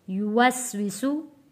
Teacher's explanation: सीन सीटी वाले अल्फाज हैं और वाव को हम होंठों को गोल करके अदा करेंगे